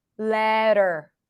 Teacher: then we have a flap T schwa r